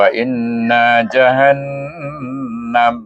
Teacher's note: Hukumnya wajibul ghunah wajib didengungkan dengan dengung dua harakat